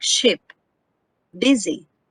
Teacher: the pronunciation or the articulation of that vowel is near close near front unrounded vowel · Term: ipa vowel e